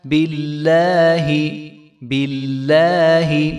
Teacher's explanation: لفظ اللہ کے لام سے پہلے زیر ہے تو اس لام کو بھی ہم موٹا نہیں کریں گے